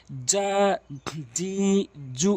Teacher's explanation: জিমটি জিব্বার মাঝখান উপরে তালুর সঙ্গে